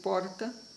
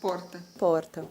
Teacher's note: O R vibrante, ou TEP, que seria o R paulistano, seria dizer porta, né? A língua bate no palato, você dá uma vibrada, como se ele desse uma batida